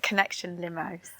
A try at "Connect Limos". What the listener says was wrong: I think it's Connect Limos. There's no E on the end. Connect.